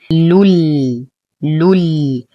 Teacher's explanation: يدخل التنوين دخولا كاملا في اللام فيسبب لي تشديد اللام. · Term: إدغام كامل بلا غنة